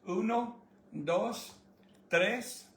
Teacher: All the vowels are very short, very cropped.